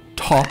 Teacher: when you speak english top is aspirated meaning has a puff of air